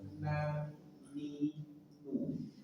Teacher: ujung lidah dengan gusi dua gigi seri atas. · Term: Nun